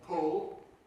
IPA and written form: pʊl (pull)